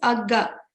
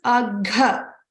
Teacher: That second option is agga without mahaprana. So this is agha, gha with the mahaprana.